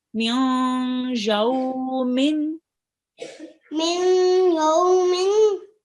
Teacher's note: Okay, just do a nasal sound with the noon here. Don't completely read the noon.